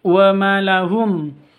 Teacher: wa ma panjang 2 harokat karena ada alif diawali dengan fathah.